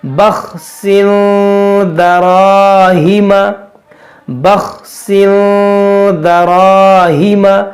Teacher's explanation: یہ را موٹا ہوگا، یہ الف مدہ ہے، کھینچیں گے، درا، را موٹا کریں گے اور کھینچیں گے، دراہم، بخسن دراہم.